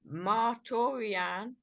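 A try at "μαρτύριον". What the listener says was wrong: You see right there what you did? You said Marturian. Marturian. How should that be read? Look at the accent. So and now listen, why would I pick on these little silly accent marks?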